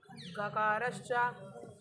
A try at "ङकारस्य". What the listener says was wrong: गकारस्य ङकारस्य है। अरे देख का रहे लिखा नहीं है, देखो लिखा है ङड़ा, बोलो।